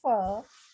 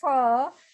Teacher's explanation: when we pronounce hindi fur we use both the lips hindi both lips but when we pronounce english for we use upper teeth and lower lip